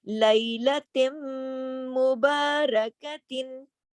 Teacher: آواز ناک میں جاری نا, غنہ بھی ہو رہا ہے اور ادغام بھی ہو رہا ہے